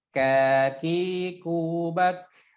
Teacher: kaf, posisinya agak di depan huruf qaf